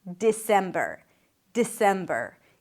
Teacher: You start with a D sound, then it's the I as in sit. Di. Then sem, primary stress.